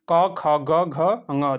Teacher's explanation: क वर्ग के सभी व्यंजन जो होते हैं कंठ से बोले जाते हैं